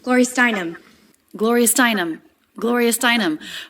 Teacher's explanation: we have a little bit of stress on the stress syllable of Gloria, but then more stress on the stressed syllable Steinem.